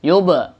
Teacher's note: ini masuk qalqalah sugro karena pantulnya kecil.